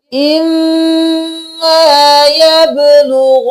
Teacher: मीम पर तशदीद है, नून पर भी तशदीद है, दोनों पर गुन्ना होगा